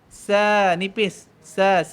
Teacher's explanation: Kemudian sin fathah kita baca sa, nipis. Sa. Dia keluar angin daripada mulut.